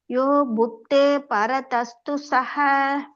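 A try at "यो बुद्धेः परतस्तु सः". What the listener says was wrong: பரத சொல்லக்கூடாது, பரத. பரதஸ்து.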